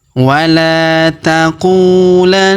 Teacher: Huruf la kita panjangkan 2 harokat karena di depan huruf la terdapat alif ya.